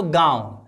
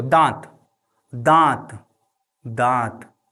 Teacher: और हाथ यहां पे रखो। देखोगे हवा नाक और मुंह दोनों से निकलेगा। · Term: अनुनासिक